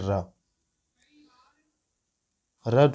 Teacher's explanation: र जो है यह लुंठित ध्वनि कहलाता है